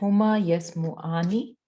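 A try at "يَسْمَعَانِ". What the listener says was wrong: अच्छा रुके, देखो आपने वर्ड क्या है, ओरिजिनल वर्ड यस्माउ, मीम के ऊपर क्या है, फतहा. आप उसको चेंज नहीं कर सकते, आपने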